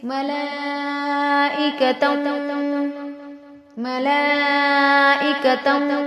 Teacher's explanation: ملائکتم، تم واو جو ہے حروف یرملون میں سے ہے، تنوین کے بعد واو جو ہے حروف یرملون میں سے غنہ کے ساتھ ملا کر پڑھیں گے